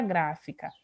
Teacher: Seria uma palavra trissílaba. Se eu perguntasse quem é a sílaba tônica, deveria ser gra. Não era para ninguém ficar na dúvida de me perguntar se seria K ou Fi, justamente porque a palavra tem acento.